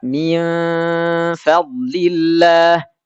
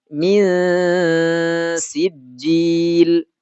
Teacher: suara samarnya itu tidak sejelas akrab. Tidak seperti suara eng, tapi pertengahan antara itu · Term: ausat